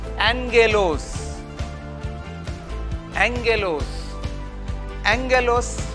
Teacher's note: if two gammas come together you have to pronounce like n sound